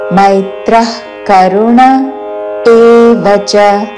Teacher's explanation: విసర్గ తర్వాత కాతో పదము మొదలవుతున్నది కాబట్టి నాభి నుండి శ్వాస వదిలి చివరిన ఖ లాగా ఉచ్చారణ